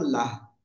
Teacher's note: গোলতা সর্ব অবস্থায় হা হয়ে যাবে এবং সাকিন হবে